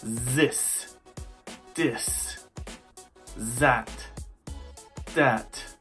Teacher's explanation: I often hear the TH sound replaced with either Z or D.